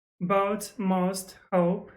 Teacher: So the vowel sound in boat, most, hope starts with Boat, most, hope. the tongue further forwards in the mouth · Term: goat fronting